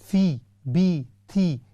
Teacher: कसरा को थिन करके पढ़ते हैं